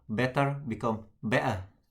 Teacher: in some British accent, they tend to drop their T.